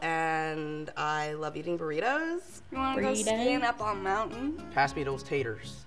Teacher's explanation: sound a little bit more like they could be from texas really loud syllables really kind of drawn out phrases it's a little sing-songy